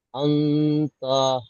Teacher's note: নুন সাকিনের পরে হুরুফে ইকফা 15টির মধ্যে তা এসেছে, তাই নুন সাকিনের আওয়াজকে গুণনা করে এক আলিফ পরিমাণ টান দিয়ে পড়তে হবে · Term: ইখফা